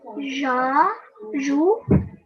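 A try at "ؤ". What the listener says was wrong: Okay, so what we need to do is we need to ignore the ya completely and focus just on the hamza. The hamza has a dhamma, so we'll pronounce this u. So you have to imagine that this ya is like a chair. The person sitting on the chair is the hamza. So it's the hamza that will make a sound, not the ya.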